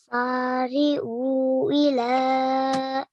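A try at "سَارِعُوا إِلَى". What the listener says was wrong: Very nice, but remember the O has to be longer than the Sin and the Lam, okay?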